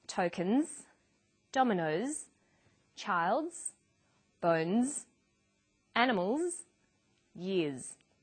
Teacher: r v v m n and after vowels and dip thongs the final s is pronounced z